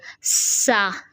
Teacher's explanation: सीन में हमारे पास सीटी आती है, सीन ज़ा सौद, 3 हरूफ हैं जिनमें सीटी आती है, सीटी की तरह तेज़ आवाज़ आती है, ठीक है। ज़ुबान की नोक को ऊपर के दांतों के अंदर की जानब, किनारों के अंदर की जानब या नीचे के किनारों के अंदर की जानब जो है अगर आप लगाएं तो सीटी आ जाती बहुत अच्छे से, सा, ठीक है।